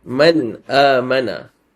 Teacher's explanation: The noon must be clear. You cannot have any ghunna. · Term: Izhar